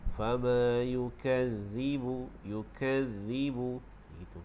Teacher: pastikan huruf zal itu walaupun dia ada syaddah, tapi pastikan tidak sampai bunyi z. Kita lembutkan.